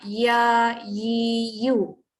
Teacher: tengah-tengah lidah dekat bawah asalnya kena naik baru ada bunyi ya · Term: huruf ya